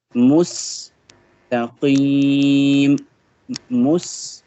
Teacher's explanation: The S sound will be here. The S sound will be more whistling because it is representing the seen letter.